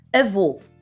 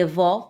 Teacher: avô com som fechado para diferenciar de avó que tem um som aberto